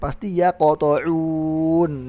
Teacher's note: kalau di tengah kalimat ya qata'un misalnya, itu udah pasti dia qalqalah sughra